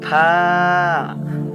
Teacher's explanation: নিচের ঠোঁট উপরের দাঁতের সাথে লাগায়া